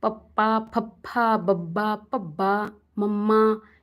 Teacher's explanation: ਆਪਣੇ ਜਿਹੜੇ ਲਿਪਸ ਆਪਸ ਵਿੱਚ ਟਕਰਾਉਂਦੇ ਆ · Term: ਦੋ ਹੋਠੀ